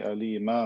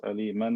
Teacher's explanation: See, I say alima, not aliman, because if I stop on tanween fatha, it turns into alif. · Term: mad iwad